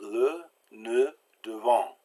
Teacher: that E is real soft and short, le, ne, devant. And you have to put your lips out to say it. The next form of the letter E is A.